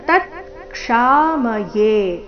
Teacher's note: ತತ್ಕ್ಷಾಮಯೇ ಮೊದಲು ಪೂರ್ತಿತ ನಂತರ ಅರ್ಧ ತಕಾರ